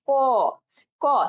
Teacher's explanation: ক এর শেষে একটা উচ্চারণ কেমন আসে, অ, অ এর মতো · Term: অধ্বনি